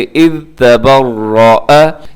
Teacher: یہاں پر ذال ہے اذ میں اور اسے قلقلہ ہونے سے بچائیے گا، اور اس میں سیٹی جو ہے وہ بھی اس سے بھی آپ نے بچنا ہے، اس کو نرمی کے ساتھ آپ نے ادا کرنا ہے۔